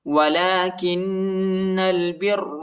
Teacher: لام پر کڑا زبر آیا ہے، اس کو ایک الف کی مقدار تک کھینچیں گے اور کاف کو نون کے ساتھ ملائیں گے، ٹھیک ہے.